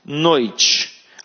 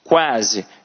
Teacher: no ditongo decrescente eu botei a vogal depois a semivogal e no quase a gente tem um ditongo crescente porque a gente tem uma semivogal e uma vogal